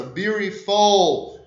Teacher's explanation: Na língua inglesa, o L vai até o céu da boca, o palato duro.